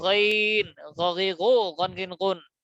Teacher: কণ্ঠনালীর শেষ ভাগ হইতে আওয়াজকে পেঁচাইয়া